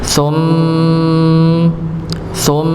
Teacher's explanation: jadi memang keluarnya gunah itu lewat hidung